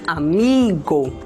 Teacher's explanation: Se a gente for falar a palavra amigo e perceber onde é a maior intensidade, ela vai se encontrar na sílaba mi, amigo, ou seja, ele é a sílaba mais forte da palavra. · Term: acento tônico